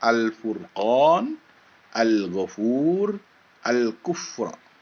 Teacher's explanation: di alif lam qamariah huruf lam nya jelas atau terang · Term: Alif Lam Qomariah